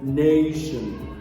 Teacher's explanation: the primary stress is placed on the first syllable